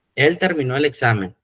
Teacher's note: Cuando lleva acento en la O, es en forma pasada y hay que darle el énfasis. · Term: sílaba tónica